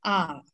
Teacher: Например, а, третий тон изображается у нас галочкой. Это у нас нисходящий, восходящий тон. Наш голос сначала опускается вниз, затем должен подняться вверх. А, как на американских горках.